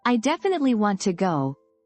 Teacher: my emphasis on, definitely, makes it sound very strong, very certain.